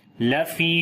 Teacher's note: فی کو لمبا کریں گے، یا مدہ ہے